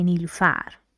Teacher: For example, if I want to say my first name, I say Nilufar. I put stress on the last syllable because that's what we do in our first language.